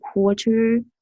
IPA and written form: ˈkwɔːrtər (Quarter)